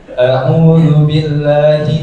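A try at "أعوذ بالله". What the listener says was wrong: Huruf A salah lagi. A.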